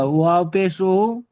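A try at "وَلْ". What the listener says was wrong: ওয়াও পেশ নয়, ওয়াও লাম জবর ওয়াল, ওয়াওর উপরে জবর আর লামের উপরে সাকিন, ওয়াও লাম জবর ওয়াল।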